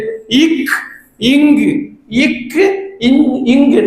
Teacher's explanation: நாவின் முதல் பகுதி அன்னத்தின் அடியை பொருந்துவதால் உருவாகக்கூடிய எழுத்து